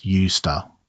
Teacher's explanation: In both used to and be used to, the S is voiceless. It is an S sound, not a Z sound. And the word to is weak, reduced to a schwa.